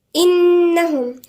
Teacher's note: حرف غنة مشدد عند النون، غنة بمقدار حركتين